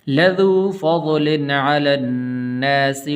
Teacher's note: یہاں پر غنہ نہیں کریں گے اس لیے کہ آگے عین حروف حلقی میں سے ہے